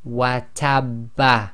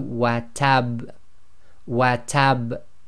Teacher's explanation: slight echo must be audible, must be intense, but must not be converted into a fatha.